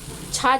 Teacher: छ जो है यह तालव्य महाप्राण अघोष व्यंजन वर्ण है